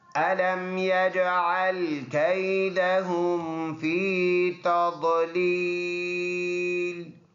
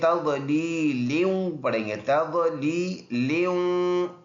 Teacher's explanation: جب ہم رکیں گے تو یہ دونوں زیر ہم نے سائلنٹ کرنے ہیں، تضلیل بن جائے گا۔